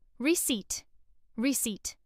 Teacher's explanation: Many learners pronounce the P strongly, saying recept, but the P is silent. The correct pronunciation is receipt.